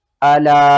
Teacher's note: الا، حمزہ زبر آ، لام الف مد زبر لا۔ الا، چھوٹی مد ہے، مد منفصل 3 الف کے برابر، آپ نے اسے کھینچ کر پڑھنا